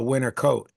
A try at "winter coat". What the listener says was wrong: you guys don't even pronounce T's. So you just said a winter coat, like you just crossed the finish line